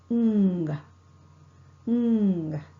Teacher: The soft palate is lowered and the air is not allowed to escape through the mouth. The air escapes through the nasal passage. Ng. Ng. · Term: ng sound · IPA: /ŋ/